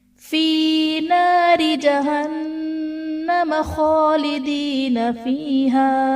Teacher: नारी में रा के नीचे जेर है तो रा को बारीक पढ़ा जाएगा। जहन्नम नून मुशद्दद है, यहाँ पर गुन्ना करेंगे।